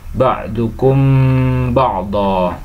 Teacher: Hukum bacanya yaitu ikhfa syafawi, di mana ada mim sukun bertemu dengan huruf ba, maka cara membacanya yaitu harus dibunyikan samar-samar di bibir dan didengungkan